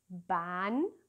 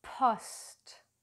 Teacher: beim P ist der Druck stärker. Man spuckt fast